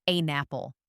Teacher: The N in turn connects to the O in off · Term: linking